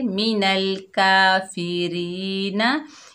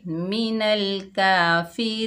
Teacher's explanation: वक़्फ़ की हालत में नून को आर्जी सुकून देंगे, नून का ज़बर ख़त्म हो जाएगा